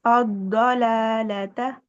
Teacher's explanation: دیکھیں آپ کی زبر بھی بلند ہی رہنی چاہیے، زبر باریک نہیں کرنی